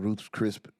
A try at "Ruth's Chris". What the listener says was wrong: Chris. Chris. Like a name, Chris. Not a P at the end.